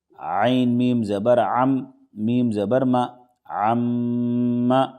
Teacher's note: یہ میم پر تشدید ہے تو اس میں غنہ ہوگا۔ نون اور میم پر جب بھی تشدید ہوگا تو اس میں غنہ ہوگا، یعنی ناک میں تھوڑی دیر آواز کو روکیں گے، اس کو غنہ کہیں گے۔